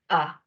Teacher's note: coloca su lengua en posición baja central